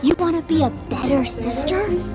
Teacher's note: It may sound like a taunt or a challenge at first, with the emphasis on the word better, better. But then the real emotion explodes at the end.